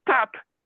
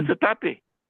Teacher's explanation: Somehow consciously he flips a vowel between the S and the T, and then puts a vowel at the end of the P.